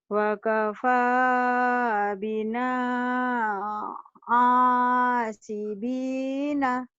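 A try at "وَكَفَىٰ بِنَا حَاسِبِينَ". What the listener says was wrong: Ha bukan a itu mah ha. Wa kafa bina hasibina. Wa kafa bina hasibina.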